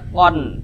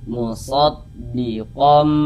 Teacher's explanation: cara membaca iqlab itu dengan cara merubah menjadi huruf mim kemudian didengungkan, digunahkan. Makanya di sini kan ada huruf mim kecil ya, mim kecil nih.